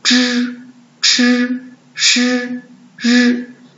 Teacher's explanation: 一下翘舌音。翘舌音在声母当中很重要，而且很多同学发音都不准，所以我们再详细的学一下。同学们看看，知、吃、诗、日，这是什么？这是声母。这个是什么？怎么读？读一。这是声母还是韵母呢？在声母的后面，它是韵母。是什么韵母呢？我们学过的单音母里边的后一， 舌头翘起来，发声部位在舌根